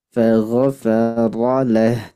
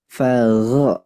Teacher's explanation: Coba ditebelin lagi Pak. Nah, keluarin sifat isti'alahnya. Jadi lidah, pangkal lidahnya naik. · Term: huruf ghain